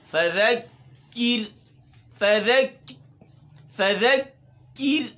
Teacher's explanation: ذال بھی باریک ہے اور را بھی باریک ہے